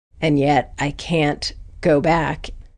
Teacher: in North America we always pronounce that [æ] vowel pretty clearly, and the word 'can't' is stressed.